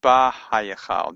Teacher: And if you say it quickly enough, it's kind of ba-hayachal. The hay gets absorbed into the bet.